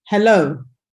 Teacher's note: a word such as hello, you know that there we put the stress on the second syllable